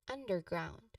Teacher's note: The pronunciation for underground is stress on un, which is the first syllable, and then ground.